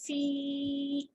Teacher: اب یا مدہ آگے اسٹریچ کریں گے 1 فنگر